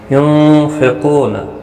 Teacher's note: ينفقون، نون ساکن کے بعد حروف اقفا کا فا آیا، اقفا حقیقی ہوگا۔ قاف حروف مستعلیہ ہے، پر پڑھا جائے گا۔ او واو مدہ بھی ہے، ایک الف کی مقدار کے برابر کھینچ کر پڑھیں گے، نہ کو کھینچنا نہیں۔